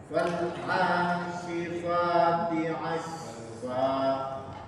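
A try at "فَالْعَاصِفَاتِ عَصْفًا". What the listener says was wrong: Shotnya kurang bagus di asfa, kurang moncong. Fal asifati asfa.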